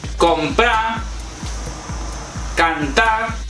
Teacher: es muy común eliminar, omitir las consonantes L, R y S al final de palabra.